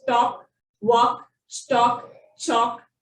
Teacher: In some cases, A and L together has the aw sound. Here the L remains silent.